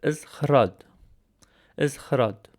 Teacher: is a throatal raspy consonant like the kh in the name of the composer Bach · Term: kh sound